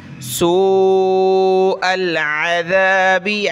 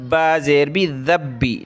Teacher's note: اس با کو ہم نے سخت کرنا ہے تشدید کی وجہ سے